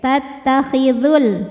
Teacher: Kalau tidak berhenti atau kita mewasalkan bacaan, maka madnya gugur. Dzalnya ini dibaca pendek. Tattakhidhul, langsung ke lam. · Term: takhalus bil hadfi